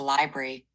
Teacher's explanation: The word library is usually said as library e in the US or library i in the UK. Many people also soften it to library dropping the middle r sound. The first syllable sounds like lie.